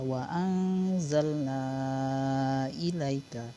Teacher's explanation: Ini yang kata yang ada nun yang ada benderanya ini, nun yang ada benderanya ini dengan hamzah ini, hukum bacaannya tadi adalah mad jaiz munfasil. Mad jaiz munfasil bisa dibaca dua harokat saja, bisa dibaca panjang.